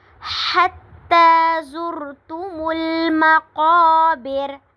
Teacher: حتی زرتم مقا پہ الف مدہ ہو رہا ہے، اور پھر را کو ہم نے ساکن کر دینا ہے